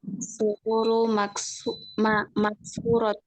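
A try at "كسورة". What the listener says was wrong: Tanwin ya. Maksuratun.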